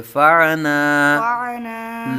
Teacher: عین کی آواز حلق کے درمیان سے